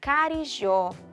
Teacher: Carijó tem na sua última sílaba a tonicidade e tem 3 sílabas, ou seja, carijó é uma palavra oxítona.